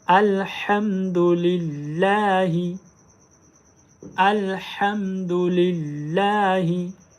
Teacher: लाम के ऊपर खड़ा ज़बर है, लाम को एक अलिफ की मिकदार लंबा ज़रूर करेंगे।